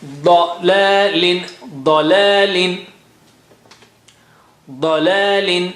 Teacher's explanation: Don't make la also thick or high. Just la. Come down.